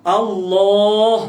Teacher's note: Yakni ditebalkan lamillah, mana lam Allah tu ditebalkan. Maka tertegah ditarqiqkan. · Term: tafkhim